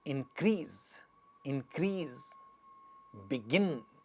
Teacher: if we have a verb like in this, to increase, so the second one gets stressed